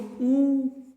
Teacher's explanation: जैसे मैं बोलूं ऊ, तो गोल हो रहे हैं होंठ, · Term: वृत्ताकार